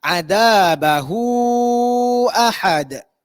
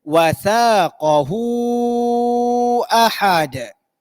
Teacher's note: Dibaca dengan kadar 4 atau 5 harakat ketika disambungkan bacaan. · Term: maksilah tawilah